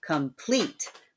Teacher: the second half of the word is getting the stress there